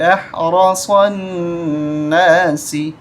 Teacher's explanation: را کو موٹا کریں گے، صاد کو بھی